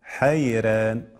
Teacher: الراء تقرأ بماذا؟ بالترقيق على الراجح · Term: ترقيق الراء